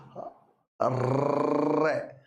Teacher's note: यानी रनि एकमात्र ऐसी ध्वनि है जिसके उच्चारण में जीभ र कंपन करती है र गोल होगी पहले तो री जीभ थोड़ी ऐसे सिकुड़ती है गोल होती है फिर कंपन करती है · वह ध्वनि जिसके उच्चारण में जीभ गोल होती हो तथा कंपन करती हो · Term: लुंठित या प्रकल्पित, लुंठित या प्रकंपित